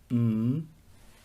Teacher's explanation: it's two lips that make the obstruction but this time they don't open the air comes out through the nose instead